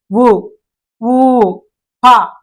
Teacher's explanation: పెదవుల నుంచి ఉచ్చరించే అక్షరాలను ఓష్ట్యాలు అని అంటారండి ఉ ఊ ప చూడండి ప అనేసరికి రెండు పెదవులు కలవడం జరుగుతుంది